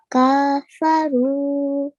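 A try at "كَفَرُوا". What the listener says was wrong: Do not prolong the ka. Kafaru.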